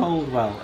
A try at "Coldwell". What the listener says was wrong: you don't pronounce the D.